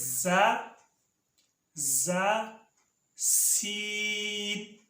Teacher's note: زبان کی نوک اور اوپر نیچے کے دانت جب آپس میں ملیں، ان سے زا اور سین ادا ہوتے ہیں